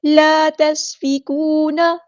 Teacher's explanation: سین کی سیٹی ہم واضح کریں گے